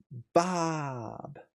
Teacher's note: it's explosive and we get that B sound. H Bob uh on the explosive sound.